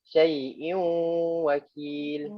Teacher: gunnah ni dia ada kadar je. Dia tak boleh syai'u wakil, tak boleh gitu. Kita kena dua harakat. Tahan sekejap.